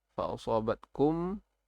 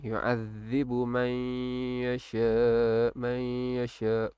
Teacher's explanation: Yu'adzibu man yasha kum yang tah, kum musibah kuat, bunyi dia kuat. Man yasha dia makin kurang dia punya dengung, bunyi dengung.